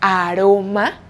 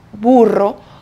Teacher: Por ejemplo, burro, bu-ro. Recuerden que la letra R tiene dos sonidos. Uno suave, como en la palabra aroma, porque solo hay una R dentro de la palabra. Y uno fuerte, como en la palabra burro, porque hay dos R's dentro de la palabra.